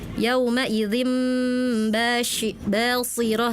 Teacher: harusnya huruf sin basirah tadi terdengarnya seperti huruf sh